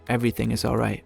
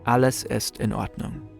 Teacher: In many other languages, the words of a sentence are spoken in a flow. In German, sometimes there's a mini pause before each individual word.